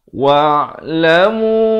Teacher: ain di pertengahan kerongkong